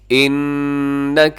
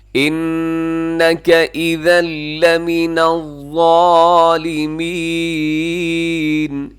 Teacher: انک نون مشدد ہے, یہاں غنہ کیجیے گا